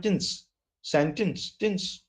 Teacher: It is not sentence, it is sentence. And when you say sen strongly, then the last part becomes very weak